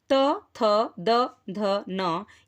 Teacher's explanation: त थ द ध न ये दंत से उच्चरित होते हैं।